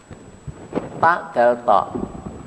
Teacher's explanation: Ini adalah makhraj dari ujung lidah